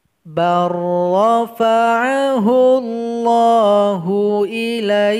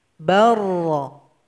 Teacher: huruf ba yang berharokat fathah langsung kita loncatkan kepada huruf ra. Jadi lam ini kita tinggalkan saja. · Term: idgham mutaqaribain